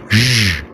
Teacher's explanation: you place your tongue, the tip of your tongue, behind the alveolar ridge and say zh. It's the voice form of sh, which is sh.